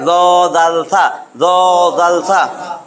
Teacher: এই 3টা হরফ উচ্চারিত হবে জিহ্বার আগা উপরের দাঁতের আগার সাথে লাগাইয়া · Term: 13 নম্বর মাখরাজ